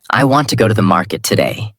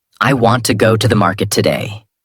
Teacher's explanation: Want, go, market are strong. Other words become lighter and faster. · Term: American rhythm